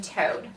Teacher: the tongue tip is elevated to the ridge right behind your two front teeth you lift that tongue tip up touch that ridge and then